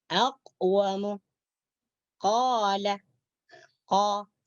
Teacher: Jadi ketika kita membaca huruf qa, huruf qaf, maka suara kita tertahan, tidak keluar. Walaupun keluar ianya cuma sedikit, tetapi dia tidak dihitung keluar.